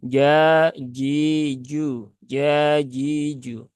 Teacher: karena dia keluar dari tengah lidah ya Tengah lidah eh menuju ke langit-langit atas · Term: huruf Jim